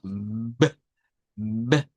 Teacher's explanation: Es un sonido bilabial, es un sonido oclusivo, pero es un sonido con voz o vibrante